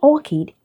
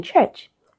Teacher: CH can actually be pronounced as K, as in orchid, can be pronounced as ch, as in church